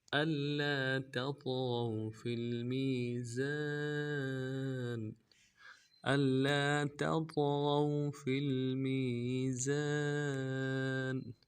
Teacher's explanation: لام کے اوپر تشدید ہے، زور دیں گے. لام کے بعد الف مدہ ہے، ایک مقدار میں کھینچیں گے